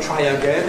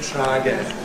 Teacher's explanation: It doesn't have to be [ˈtraɪ əˈgen]. It can be [ˈtraəˈgen].